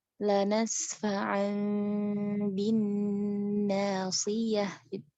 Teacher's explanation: Jadi wajib kita rubah si nun sukun atau tanwin ini ke huruf mim bunyinya ya, ke huruf mim yang tersembunyi di balik huruf ba dengan kita menjaga kadar dengung kita atau gunnahnya, yang mana gunnahnya itu disebabkan huruf mim bukan karena huruf nun ya, ngerti ya?